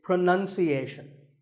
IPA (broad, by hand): prə-nən- si-’eɪ-shən